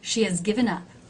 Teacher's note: Do you see how the word has is very low in pitch? It's actually been reduced and I've dropped the H.